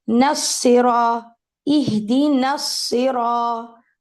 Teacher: نون کے بعد جو الف ہے وہ ڈراپ اس لیے ہو رہا ہے کیونکہ آگے ہم نے صاد پڑھنی ہے which is a ساکن. صاد مشدد کے انڈر ایک ساکن صاد ہے.